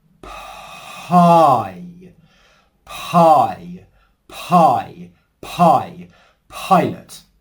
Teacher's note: We're not pausing the airflow in between whispering that P sound and the H sound. It's a continuous flow, and that's what gives us the native English P sound.